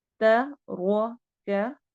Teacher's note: तरोका रो को मोटा पढ़ना है।